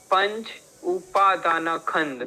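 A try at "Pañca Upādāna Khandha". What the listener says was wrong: Not Panch. Panch in Hindi is correct, In Pali is Pancha Upadana Khanda.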